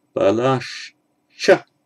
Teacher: It would be balah cha, but next word begins with a ch, so the visarga becomes a sh.